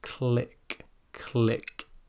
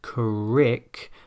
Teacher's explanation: It should not sound like crick, but click. You can hear that flicking of the tongue on the top of the mouth there. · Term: L sound